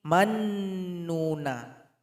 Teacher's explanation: jadi bunyi NU ini isyarat bibir saja tanpa keluar suara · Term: isymam